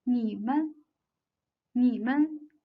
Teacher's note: We can find 们 is pronounced lighter and shorter.